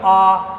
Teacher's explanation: ऐसा स्वर जिसके उच्चारण मुंह पूरा खुलता है। जैसे मान लो आप बोलोगे आ, तो बोला मुंह पूरा खुल रहा है, तो विव्रत क्या होते हैं, पूरा खुलेगा और यहाँ आधा बंद रहेगा, यहाँ पर पूरा बंद रहेगा, यहाँ आधा खुला रहेगा।